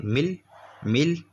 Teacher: اس کا مطلب سنیے، یعنی آپ دیکھیں یہ نون ساکن کے بعد لام آ رہا ہے، لام میں ادغام ہوا، لیکن یہ جو ادغام ہوگا لام میں یہ بغیر گنہ کے ہوگا، یعنی ناک سے آواز نہیں نکالیں گے